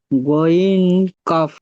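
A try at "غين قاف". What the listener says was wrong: ওয়াইন কাফ, টান দেন, আরো টান দেন, কাফেতে আরো টান দেন।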